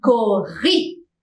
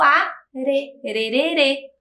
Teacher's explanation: na primeira palavra o r se repete então ele fica ainda mais forte